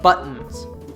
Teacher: The T ends the first syllable and is followed by a vowel, so we cut it at the back of the throat. This is called a glottal T, and it sounds like this, buttons.